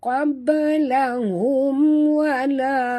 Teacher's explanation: mim mati bertemu waw, tak boleh dengung, izhar syafawi.